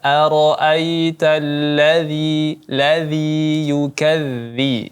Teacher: Jadi lidahnya itu dijepit antara gigi atas dan gigi bawah. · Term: huruf dza